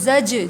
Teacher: زاجا، زا جیم زبر زج، جیم پہ بھی قلقلہ ہوگا، آواز پلٹ کر آئے گی